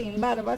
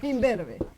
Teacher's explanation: Porque automáticamente esta b que se pronuncia con los dos labios le contagió a la n se pronuncia como m con los dos labios